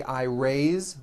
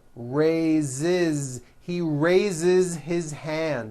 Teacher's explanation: it's pronounced with a voiced Z.